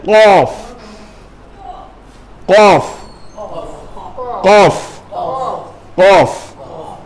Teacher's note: জীবের একদম গোড়ার অংশটা ওই আলা জিহ্বার সাথে লাগিয়ে ওখান থেকে উচ্চারণ করবেন